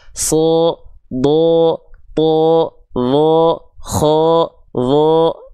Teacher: Kenapa terdengar seperti vokal O? Karena dia adalah termasuk ke dalam huruf yang karakter pelafalannya adalah tebal. · membuat vokal A pada harakat fathah yang ada di huruf tebal itu berubah menjadi seperti vokal O